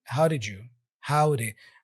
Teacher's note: The first D has a flap sound